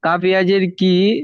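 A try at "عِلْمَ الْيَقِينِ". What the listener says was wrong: কাফ নেই, কফ ইয়া নুন জের কিন, এটা হচ্ছে মর্দে আরজি আখফি।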